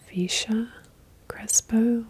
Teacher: in Mexico the Double L was pronounced like a y sound when I was in South America they would pronounce it with a sh sound